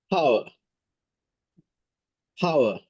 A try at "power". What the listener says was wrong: So you can slow down a little more to power, like that. Yes, and the more air. Pa, power. Yes, so you want to feel the burst at the beginning.